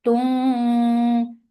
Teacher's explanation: Tum idgham with ghunna. So keep the sound in your nose for a longer time.